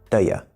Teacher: You, which is just a pronoun, usually becomes ya.